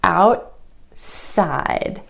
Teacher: The tongue stays up for the t and goes straight into the s sound. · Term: held T